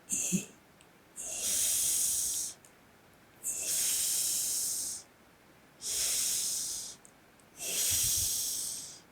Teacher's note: 즉 이 소리를 낼 때는 이라고 유성음을 낸 후에 우리가 ASMR 방송을 하는 것처럼 성대를 울리지 않고 소리를 혀와 딱딱한 입천장 사이로 불어내면서 입천장과 혀 사이의 가벼운 마찰을 통해 소리를 내야 합니다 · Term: CH 발음